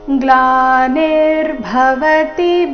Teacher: ಭ ಮಹಾಪ್ರಾಣ ರಸ್ವ ಇದೆ